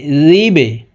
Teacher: এই বা হরফ কলকলার হরফ নিচের দিকে ধাবিত করে ধাক্কা দিয়ে উচ্চারণ করতে হবে